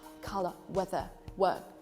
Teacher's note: If you want to sound more British, you pronounce these words without pronouncing R.